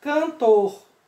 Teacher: Como o caso da palavra cantor. A sílaba mais forte é tor.